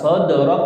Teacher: Qalqalah sugro ya, dipantulkan sambil jalan ya